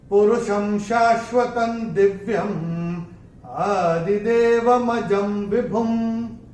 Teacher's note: चौथे चरण में ज के ऊपर अनुस्वार के बाद का अक्षर है व, और अनुस्वार के बाद जब व आएगा तो अनुस्वार का उच्चारण होगा म